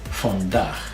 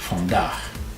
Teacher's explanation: Remember to pronounce your double A, not aw.